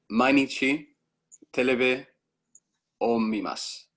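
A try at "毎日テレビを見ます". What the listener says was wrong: Lovely. Mainichi terebi omimasu.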